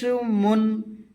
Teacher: মিম উচ্চারণ করবে দুই ঠোঁটের শুকনা অংশ থেকে